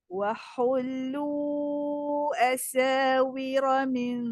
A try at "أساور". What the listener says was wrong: Jangan singkan asa. Bagi asa.